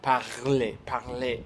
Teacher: Parce que le R, c'est dans la gorge et le L, c'est là.